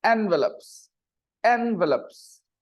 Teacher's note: and the stress is on the first syllable